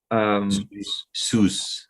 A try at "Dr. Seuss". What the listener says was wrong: Yeah, with an S, not a Z. So Seuss. Seuss. Dr. Seuss. Kind of like I don't know if you know Greek mythology, but like the main guy was Zeus. Instead of the Z, it's a Sue, like the name Sue. Seuss.